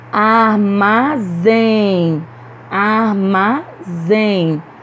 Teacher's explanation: pronunciamos com mais força a última sílaba então essa palavra aí também é oxítona